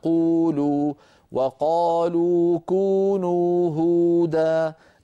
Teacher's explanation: نجد بأن الشفتين مضمومتان وأقصى اللسان ارتفع قليلا، ولكن هذا يحدث تلقائيا، يعني لا يتعمده القارئ، لكن هذا أمر حقيقة، هو حقيقة هكذا يحدث داخل الفم. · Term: ارتفاع أقصى اللسان